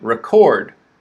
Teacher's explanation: we have stress on the second syllable right record chord is stressed record okay so look for those